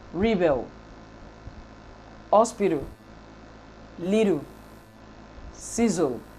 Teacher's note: When an English consonant occurs before a syllabic lateral sound in English, it should be laterally released. Therefore, B, T, and Z in the example above should be laterally released. · It is a lateral sound that could function as the peak of an unstressed syllable in English.